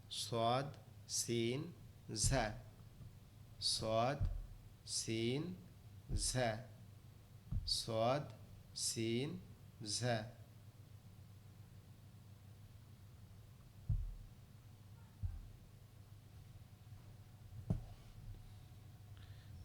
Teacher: জিহ্বার আগা নিচের দুই দাঁতের আগার সঙ্গে লাগায়